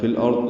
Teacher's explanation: زبر کی وجہ سے را پر پڑھیں گے